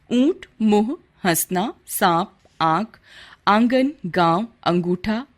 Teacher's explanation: अनुनासिक चंद्र बिंदु को अनुनासिक कहा जाता है। इसमें स्वरों का उच्चारण नाक और मुंह दोनों से किया जाता है।